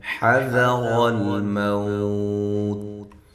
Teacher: حا کو واضح کریں، ذال کو نرم ادا کریں، را کو موٹا کریں، لام کو ہلانا نہیں ہے، لام ساکنہ کو، اور باریک ہے۔